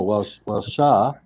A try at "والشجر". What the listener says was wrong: أحسنت.